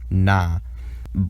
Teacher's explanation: the voiced alveolar nasal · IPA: /n/